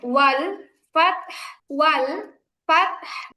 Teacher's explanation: ওয়াল ফাতাহ হবে না, ওয়াল ফাতহ। আপু তাই তো সাকিন